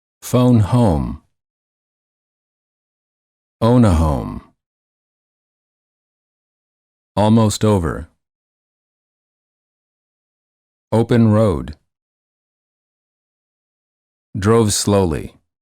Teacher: for the O the lips are very rounded and tense and the tongue is a bit tense and it moves from the mid High to the high position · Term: o as in boat